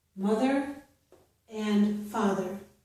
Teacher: the TH is usually pronounced with the voiced sound